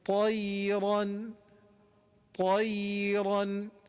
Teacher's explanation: ta is heavy, ya is light, then ra is heavy again. Heavy, light, heavy.